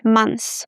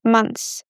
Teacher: My recommendation is to drop the th, months. Because when we speak fast, we don't pronounce it.